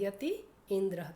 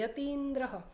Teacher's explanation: એટલે આપણે યતીન્દ્ર પણ યતિ ઇન્દ્ર, તો યતિ ઝડપથી બોલીએ છીએ યતીન્દ્ર, એમાંથી થોડો સમય લે. એટલે રસ્વ ઈ બોલીએ એના કરતાં ડબલ સમય દીર્ઘ ઈની અંદર આપણે ઉચ્ચારીએ. એટલે કોઈ પણ દીર્ઘ સ્વરનું ઉચ્ચારણ છે તે રસ્વ સ્વર કરતાં બમણા સમયથી થાય એટલે થોડો સમય વધારે લે બોલવાની અંદર.